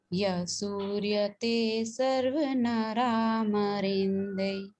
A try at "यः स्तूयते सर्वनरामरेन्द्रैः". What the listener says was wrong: सूर्यते नहीं स्तूयते, है ना। यः स्तूयते सर्वनरामरेन्द्रैः,